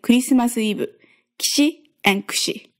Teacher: These are basically whispered vowels, which most audibly affect the consonants that come before them. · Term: devoiced I and U